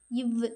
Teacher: இடம் மார்பு நாவின் நுனி அன்னத்தின் நுனியை பொருந்துவதால் பிறக்கும் எழுத்துக்கள் இட்டு ன்னு கீழ் இதழும் மேல்வாய் பல்லும் இணைவதால் பிறக்கும் எழுத்து